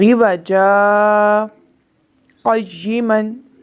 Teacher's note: दो ज़बर था, उसको सक्ता में हमने अलिफ से बदल दिया और यहाँ पर आवाज़ रुक गई और सांस जारी रहा